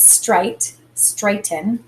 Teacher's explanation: the accented syllable is this first one straight and it has that a the long a sound when a